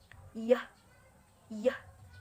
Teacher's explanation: keluarnya dari lidah bagian tengah dan langit-langit atas tapi tidak tersentuh hanya mendekati